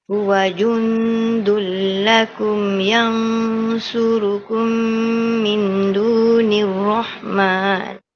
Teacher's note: Jadi kita nampak yang ikhfa hakiki tu dia ada beza tebal nipis dia. Kalau yang jundun dia bunyi biasa nipis lah dia punya dengung tu. Tapi bila sampai yang surukum dia akan tebal. Sebab nak masuk makhraj shad.